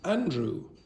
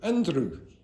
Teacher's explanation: my name in English is Andrew. I don't touch the top. My name in Irish is Andrew, and I touch the top.